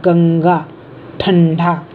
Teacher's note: इसके बाद हमेशा कोई व्यंजन आता है और जिस व्यंजन से पहले ये आता है उसी व्यंजन वर्ग के पंचम वर्ण नासिक व्यंजन के रूप में ये बोला जाता है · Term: अनुस्वार